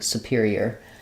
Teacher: So what you don't want is superior with a long, clear oo. It's going to have a very short and somewhat reduced oo